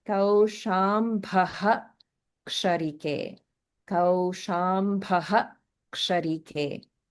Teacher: we actually pronounce the full visarga. So normally in the middle of the line, we would only pronounce the visarga in a kind of half form, not the full form.